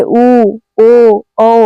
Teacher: विवृत मुखी स्वर जिन स्वरों के उच्चारण में होठ गोलाकार स्थिति में हो उसे विवृत मुखी स्वर कहते हैं।